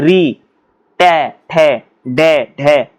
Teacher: मूर्धा यानी अंदर जो जीभ है, जीभ को जब उठाओगे तो अंदर जो रहता है हल्का सा दिखता है उसको बोलते हैं मूर्धा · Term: मूर्धा व्यंजन